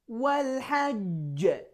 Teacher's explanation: I stressed the jim very much and then I release it quickly. But at the same time, I didn't make it so long. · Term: qalqalah